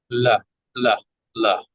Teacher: So that front of the tongue is either touching or near the alveolar ridge, but then we allow the sides to be open so that the air can flow through here. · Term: lateral consonant